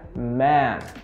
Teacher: Repara que é um som aberto, né? Como se fosse aquele mas a minha mandíbula ela desce um pouquinho